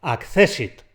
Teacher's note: Lo estoy pronunciando como palabra llana. Cuidadito, que hay mucha gente que lo convierte en esdrújula, pero es llana.